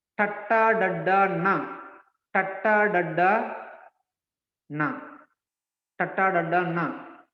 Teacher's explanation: So the tongue is touching the upper teeth. That's why they are called dentals.